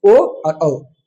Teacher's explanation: कंठोष्ठ से उच्चारित होने वाले वर्ण हो गए ओ और औ।